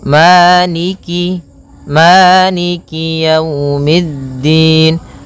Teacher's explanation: kasrahnya juga disempurnakan, jangan sampai dibaca dengan e, tapi dia i